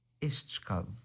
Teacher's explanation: when we pronounce it with the modern way, the tau becomes a cha, the qaf becomes a ka